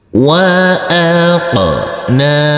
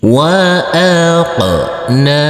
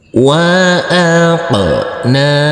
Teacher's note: Huruf qaf yang bersukun ini kita pantulkan karena ini adalah bacaan qalqalah. Dan huruf nun ini kita baca panjang dengan panjang 2 harokat karena di atasnya ada huruf alif kecil yang berdiri tegak lurus.